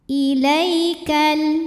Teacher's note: ada huruf Lin sebab ada ya sukun yang sebelumnya baris fathah maka dibunyikannya cukup dilembutkan